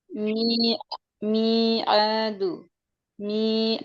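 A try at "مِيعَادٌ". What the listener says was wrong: মিআদ, আইন উচ্চারণটা একটু সুন্দর হবে।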